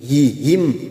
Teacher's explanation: huruf ha makhrajnya ada di bawah tenggorokan butuh tenaga saat membunyikan